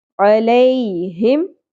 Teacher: علیہم یا ساکن سے پہلے زبر نرمی سے ادا کریں گے، حرف لین ہے